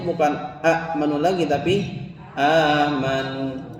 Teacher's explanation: Karena ada hamzah yang digantikan menjadi mad, maka a yang pendeknya menjadi panjang ya. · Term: Mad badal